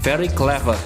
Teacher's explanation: dalam pengucapan British aksen disitu diakhir kata clever ya huruf r-nya menghilang Ya kalau untuk Amerika aksen dia huruf r-nya tidak dihilangkan Nah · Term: British accent